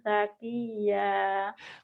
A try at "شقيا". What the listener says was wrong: Coba itu shin-nya aja sakia aja. Syakia. Syakia. ustazah nanti ustazah kurang shin jadinya ya. Dilatih nih shin-nya ya.